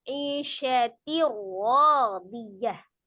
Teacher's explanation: Bi dengan la tidak, gunnah dengung. Berarti ditasdidkan saja dengan tidak disertai dengung. Jadi jangan didengungkan, ditasdidkan saja. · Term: idgham bila gunnah